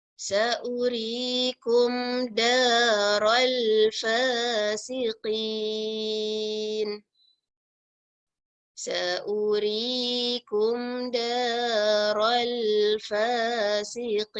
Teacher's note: saurikum u ni kita tak baca panjang kerana waw dia tanda bulat di atas.